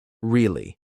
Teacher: if they say it with a flat tone really they're bored or uninterested